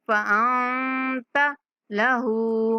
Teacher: فأنت یہاں پہ بھی نون پہ اخفا کریں گے